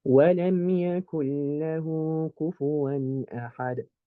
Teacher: You merge this noon into the lam by basically skipping it.